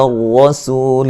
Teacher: کریں گے، اس سے پہلے حرف پر زبر ہے، اچھا جی، را کو موٹا ادا کریں گے، را کے اوپر زبر ہے